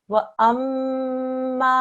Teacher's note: stretch out the ma sound for 2 seconds because of this alif, okay?